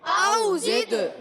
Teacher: زا کی ادائیگی سیٹی کے ساتھ، اور زا کو دال سے ملانا ہے، دال ساکن ہے اور قلقلہ ہوگا دال میں، اور آواز لوٹ کر آئے گی